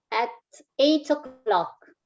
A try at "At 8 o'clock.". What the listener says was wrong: Dai l'accento su o'clock. At 8 o'clock.